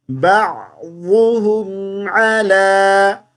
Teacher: عین کی آواز کو اچھے سے نکالیں گے، اور ضاد کو پڑھتے ہوئے ضاد کی آواز زبان کے دونوں کناروں سے ادا ہوتی ہے